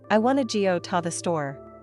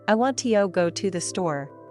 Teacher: For example, in the sentence "I want to go to the store," the main stress falls on want, go, and store. The words to and the are said faster and with less emphasis. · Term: rhythm